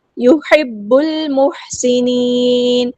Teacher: سین کی سیٹی ہم واضح کریں گے، نون کو ہم ساکن کر دیں گے وقف کرتے ہوئے، اور مد عارض بھی ہوگی. · با کو ہم نے لام کے ساتھ ملا دینا ہے، حمزۃ الوصل ہمارا ڈراپ ہو جائے گا. لام یہاں پہ لام قمریہ، اس کو ہم ظاہر کریں گے.